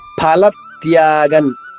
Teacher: ఫ 2 పెదవులు మూసి ఉంచి ఒక్కసారిగా గాలి బయటకు వదిలితే ఫ వస్తుంది.